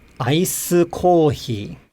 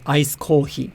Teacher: But the point that I'm trying to make is that the original pitch accent of ice, it changes, right? So the original pitch accent of the word gets overridden, and the pitch starts low, then it goes high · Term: low, high, low pitch accent